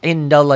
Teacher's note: tebal tafkhim karena sebelum lafaz Allah baris di atas